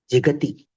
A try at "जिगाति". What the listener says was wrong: जिगाति. जिगति नहीं है, जिगाति. हलादि पित् प्रत्यय परे न किंचित कार्यं भवति. अजादि पित् प्रत्यय परे अच्सन्धिः भवति. तो जिगा प्लस ती, जिगाति.